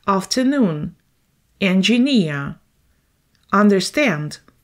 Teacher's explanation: The third syllable is under the stress.